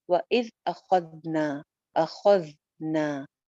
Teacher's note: زال میں سیٹی نہیں ہوتی ہے، سیٹی کے ساتھ نہیں پڑھنا، آواز کو چلتا ہوا رکھنا ہے